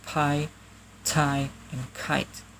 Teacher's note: the voiceless plosive are aspirated, releasing a small burst of air after the stop sound